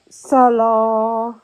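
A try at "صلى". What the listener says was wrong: Prolonge. Appuie sur l'âme. Non, il y a shadda. Appuie.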